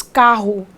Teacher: sílaba tônica nós pronunciamos carro não pronunciamos carro em outras palavras Nós realmente Fazemos uma forcinha na primeira sílaba da palavra carro · Ela tem um acento tônico, ela é uma paroxítona, porque a sua penúltima sílaba é a sílaba tônica